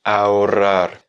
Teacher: rouler beaucoup plus les double R du milieu, la double R, et ensuite un R qui est plus léger à la fin